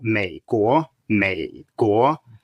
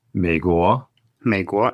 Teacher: a low tone followed by a rising tone